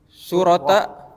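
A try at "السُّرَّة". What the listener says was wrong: Ya syaddah ala ra. Syurrah. Surrah.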